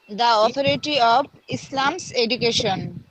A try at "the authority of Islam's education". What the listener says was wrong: এখানে দা বলা যাবে না, দিও বলতে হবে, এখানে অ আছে না, ও সাউন্ড মানে হচ্ছে বাউল সাউন্ড।